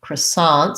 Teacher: say that as i guess an ah vowel croissants um and they say the ts unlike the french who may not say that plural sound croissants second syllable stress so we bring over some of the